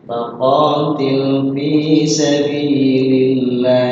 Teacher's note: Faqatil atau qa panjang memiliki durasi 2 ketukan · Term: mad tabi